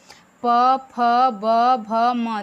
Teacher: मैं जब उच्चारण कर रही हूँ तो मेरे ओठ दोनों बंद हो रहे हैं, खुल रहे हैं। प, फ, ब, भ, म, यानी इन सब को बोलने में हमें किसकी आवश्यकता पड़ती है, ओठ की। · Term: ओठस्थ व्यंजन